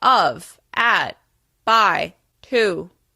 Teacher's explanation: you're going to come down to your Baseline pitch when you're saying words and syllables that don't really matter these are what we call unstressed words and syllables think about · those words are said at a slightly lower pitch this is your Baseline pitch when you're emphasizing keywords and syllables